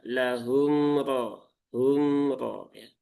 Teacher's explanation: sifat pertengahan antara syiddah dengan rokhawah. Maka alirkan sedikit ya untuk menunaikan tawasudnya.